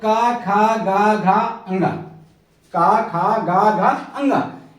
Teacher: क वर्ग के जितने भी अक्षर हैं उनको हम कंठ से बोलते हैं इसलिए क वर्ग को कंठ वर्ग कहा गया ठीक है इसी